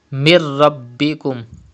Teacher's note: The rule idgham will be done but gunna will not be done, because in case of lam and ra idgham is done without gunna. But you have to read ba with emphasis because ba is a qalqala letter and it is mushaddad in this word.